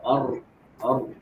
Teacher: Bain pada huruf ra adalah dengan mengalirnya sebahagian suara melalui celah kecil ketika mengucapkannya disebabkan terhalang oleh sebahagian besar hujung lidah yang bergetar menyentuh langit-langit